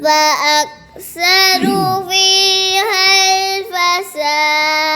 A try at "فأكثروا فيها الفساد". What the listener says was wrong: اب غلطی ہوئی فأكثروا واو کو لمبا نہیں